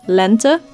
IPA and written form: lɛntə (Lente)